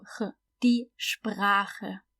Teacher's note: So the SP at the beginning is sp, and then we have the German R, the R, and then we have the CH, which is the guttural one because it comes after A